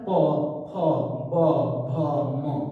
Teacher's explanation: पवर्ग प फ ब भ म का उच्चारण स्थान ओष्ठ है। जैसे प ओठ सट रहा है, प फ ब भ म, उ ओठ की बात हो रही है।